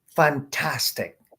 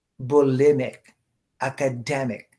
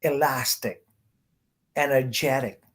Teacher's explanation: You stress the syllable before ic.